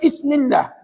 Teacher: Bismillah, is saja. Tiba-tiba Ismillah, ba tu tak bunyi